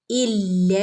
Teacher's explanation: ലാമിന്റെ കൂടെ അലിഫ് മദ് വന്നിട്ടുണ്ട് രണ്ടനക്കം നീട്ടി കൊടുക്കുക